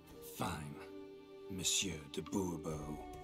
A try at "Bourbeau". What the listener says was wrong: The emphasis falls on the last syllable. Bobo.